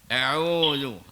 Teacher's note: Huruf ain ni makhraj dia di tengah-tengah halqum ya. Maknanya tengah halqum ni maksudnya di bawah daripada biji halqum kita ambil dia.